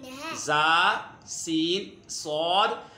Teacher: इन्हें जब अदा करते हैं तो सीटी की तरह आवाज़ आती है, इसलिए इन्हें हुरूफ सफ़ीरिया कहते हैं।